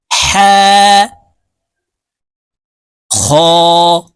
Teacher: করতে হবে কারণ হার মাখরাজ হলকের মধ্যখান থেকে হবে হা [মিউজিক] খ হা এই দুটি হরফ এক আলিফ টেনে পড়তে হবে